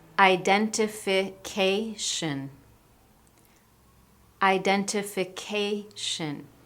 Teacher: My voice goes up. It's louder and it's clear when I say -ca. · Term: stress